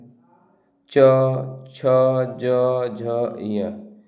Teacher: च वर्ग के वर्ण अक्षर तालव्य के अंतर्गत आते हैं। च ञ ये तालव्य वर्ण है।